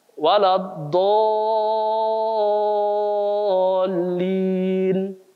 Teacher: dolin itu mad lazim namanya dalam tajwid. Dolin itu harus 6 harokat.